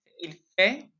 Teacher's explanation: So we don't pronounce the T at the end of fait.